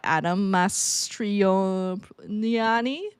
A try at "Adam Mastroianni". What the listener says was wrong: Adam Mastroianni, I think. Oh no, there's no L. It's Adam Mastroianni. Adam Mastroianni.